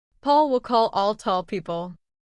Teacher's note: the back of your tongue moves down, making a deeper sound. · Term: dark L